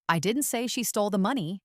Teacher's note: by putting emphasis on money, I'm hinting that she might have stolen something else but not money